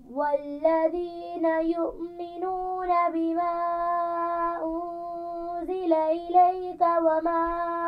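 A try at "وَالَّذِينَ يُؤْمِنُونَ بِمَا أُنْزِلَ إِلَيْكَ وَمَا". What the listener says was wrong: حمزہ کو واضح کیجئے.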